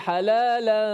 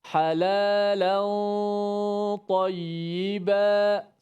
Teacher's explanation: Bunyi gunnah tu biar sesuaikan dengan ta.